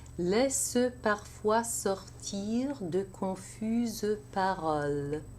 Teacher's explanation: laissent parfois with the pronunciation of the ENT of the verb as a separate syllable, mute E. And de confuses paroles, because in confuse, it's feminine plural, ES, and because you have the S, you have to pronounce the E as a separate syllable.